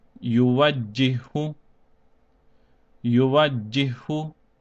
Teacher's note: the first ha will be skipped, so the jim will be joined over with the second ha, and this will be read as yuwajjihu, yuwajjihu.